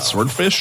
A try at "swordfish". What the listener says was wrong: You're making it sound like it's shit. You're saying S word. You're like sword.